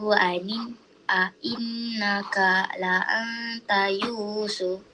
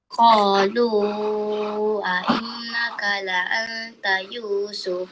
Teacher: mad jaiz munfasil kalau dalam keadaan wasal hendaklah baca empat atau lima harakat